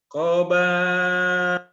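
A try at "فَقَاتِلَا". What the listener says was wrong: koba koba. Orang lupa titik sih Bapak.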